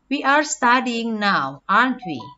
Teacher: Falling intonation. Falling intonation is used when the speaker wants to confirm.